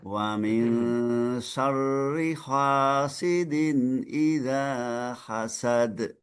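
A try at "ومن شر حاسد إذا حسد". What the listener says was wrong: Lebih dibuka haknya. Wa min syarri hasidin idza hasad.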